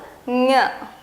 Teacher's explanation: ಇದು ನಾವು ಒಂದು ಸ್ವಲ್ಪ ಒಳಗಡೆ ಮೂಗಿನ ಉಚ್ಚಾರದಿಂದ ಹೇಳ್ತೀವಿ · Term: ಞ